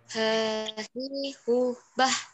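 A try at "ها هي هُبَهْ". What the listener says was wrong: Nah, jangan sampai hahi hubah. Padahal ini huruf H. Biasanya ini fatal ketika hampir semua murid privat saya ketika membaca H di akhir itu malah jadi sisa nafas. Bukan fih sisa nafas, tapi harus tetap kuat.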